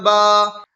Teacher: الف سے پہلے با کے اوپر زبر کی حرکت ہے، اس لیے الف مدہ ہوا، الف مدہ کو ایک الف کے برابر کھینچ کر پڑھیں